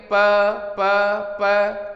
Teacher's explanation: तो जब प बोलेंगे प तो होठों के मिलने की क्रिया है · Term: स्पृष्ट